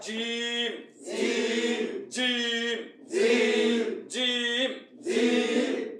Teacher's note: জিম হরফ জিব্বার মাঝখান থেকে শক্ত করে পড়তে হয়